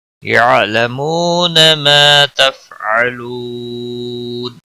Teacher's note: نون وقف کی صورت میں نون ساکن پڑھا جائے گا، وقف بالاسکان ہوگا. مد العارض وقفی ہوگا. 3 سے 5 الف کے برابر کھینچ کر وقف کریں گے.